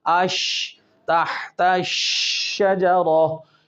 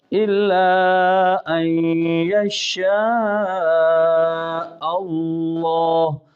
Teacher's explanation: اس کے اندر شین کی آواز منہ کے اندر پھیل جاتی ہے، اس پھیلنے کو تفشی کہتے ہیں